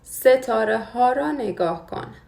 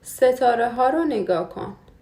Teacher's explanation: When the noun ends with a vowel sound, the H remains pronounced because it's hard to pronounce a after a vowel sound.